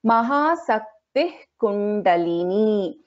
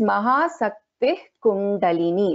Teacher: Here the Visarga gets replaced by the Jivha Muliya.